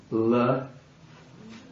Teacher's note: it's a cerebral L. That is, it's the L sound, or retroflex L.